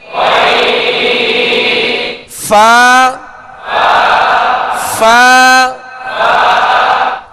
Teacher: اوپر کے دونوں دانت جو سامنے کے اوپر کے دو دانت ہیں، ان کا کنارہ اور نچلے ہونٹ کا تر حصہ، اس سے فا ادا ہوتا ہے